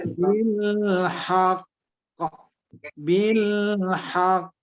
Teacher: jadi kalau kita wakaf atau berhenti, maka qalqalahnya qalqalah kubro atau qalqalah besar